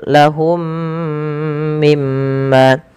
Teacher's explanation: Mim yang pertama ketika ia sukun bertemu dengan mim setelahnya maka ini wajib ditahan suara mim yangnya suara mimnya karena ia ada idgham mimi.